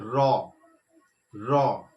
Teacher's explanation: জিহ্বাটা উল্টাচ্ছে, কিন্তু একটু কম্পনের সৃষ্টি করছে রটা উচ্চারণের ক্ষেত্রে। এই ক্ষেত্রেও কিন্তু কোথাও স্পর্শ করছে না, আবার মনে হচ্ছে যেন কোথাও একটা স্পর্শ করছে, মানে ধোঁয়াশা ভাব। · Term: কম্পিত ধ্বনি